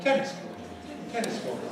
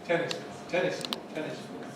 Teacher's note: Tennis is strong, court is weak.